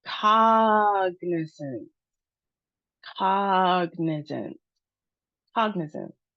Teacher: The emphasis is on the first syllable with the aw sound, caw. Caw and our schwa sound.